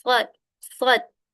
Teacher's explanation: Huruf shad keluar dari ujung lidah, bertemu dengan pangkal gigi seri bagian bawah. Pangkal ini harusnya bagian bawah ya.